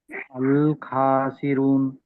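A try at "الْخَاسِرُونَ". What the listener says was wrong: ఖాసిరూన్ దీర్ఘం తీయాలి.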